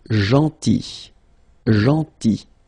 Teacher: remember this final L is not pronounced